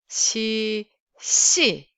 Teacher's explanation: like sh, but you have to keep your mouth flat, neutral.